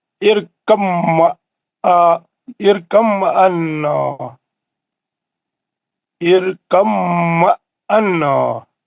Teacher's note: حروف بی ساکن کا حروف میم مشدد میں ادغام متجانسین ہو گیا